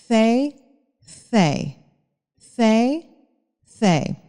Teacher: esse é o th não vozeado então você não precisa de usar sua voz para produzir esse som basicamente você vai falar C C com a língua presa fe